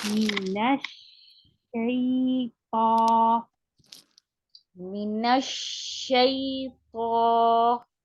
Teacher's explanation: When you say minash, don't let your lips come forward like dhamma. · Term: sheen